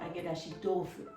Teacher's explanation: when they put together the t sound becomes a d sound